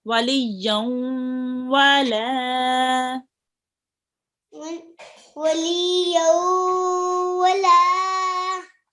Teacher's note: I did hear the nasal sound with the ya here.